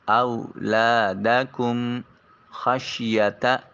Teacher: خا کو حلق سے ادا کریں گے۔ شین حرف شجریہ ہے، اس کی ادائیگی کے وقت زبان منہ پورے کے اندر آواز پھیل جائے۔